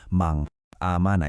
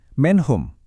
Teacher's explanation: Coba perhatikan gimana saya memutus suara N sebelum masuk ke A. Jadi bukan mang amana ya, tapi man aman. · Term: izhar